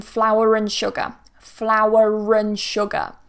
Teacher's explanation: flour ends in a schwa